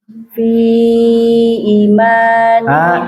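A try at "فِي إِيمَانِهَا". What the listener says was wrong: I-nya panjang I-nya. Bukan fa, fi.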